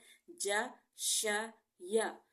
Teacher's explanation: اس کے بعد ہمارے زبان کے بیج والے حصے سے، بیج زبان سے یہ 3 حروف ادا ہوتے ہیں، ج، ش، یا۔ شین میں تھوڑی سی جو ہے وہ شور کی آواز پیدا کی جاتی ہے، اس کی صفت کو جو ہے واضح کرنے کے لیے۔